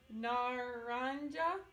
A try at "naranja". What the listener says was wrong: No, naranja. The J sound like an H. Naranja. Say it with me.